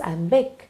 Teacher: so whenever in poetry you have a foot where you see one unstressed syllable followed by a stressed syllable